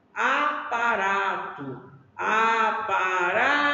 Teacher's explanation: a sílaba mais forte aqui do aparato é o ra